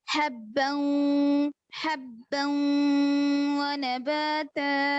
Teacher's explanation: بو نہیں پڑھیں گے, بو غننے کے ساتھ پڑھنا ہے.